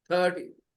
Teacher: No need to stress the second part. Only stress the first part.